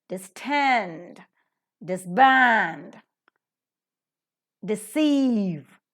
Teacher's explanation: prefix of dis so it is always Disturbed distend disband deceive the second word second syllable or the root syllable is accented · The second word, second syllable or the root syllable is accented and never the prefixes.